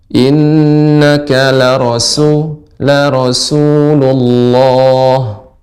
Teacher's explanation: Sinnya ditajamkan pada kata Rasul.